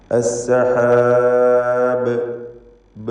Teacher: അസ്സഹാബ് എന്ന് പറയുമ്പോൾ അന്ത്യത്തിൽ ബായിന് സുക്കൂൻ നൽകി വഖഫ് ചെയ്യുന്നു. ഇവിടെ ഖൽഖല കുബ്ര നൽകി വളരെ നല്ലപോലെ ശബ്ദം ചലിപ്പിച്ച് വ്യക്തമാക്കി കേൾപ്പിച്ചുകൊണ്ട് വഖഫ് ചെയ്യണം.